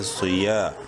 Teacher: صاد زیر صی bold letters میں سے ہے، صاد بولڈ کر کے پڑھیں گے۔ · یا زبر یا الف زبر یا، الف مدہ ہے، یا کو ایک کے برابر لمبا کریں گے۔